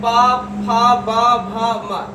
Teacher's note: इन सब का उच्चारण स्थान कहाँ से होगा, ओष्ठ से।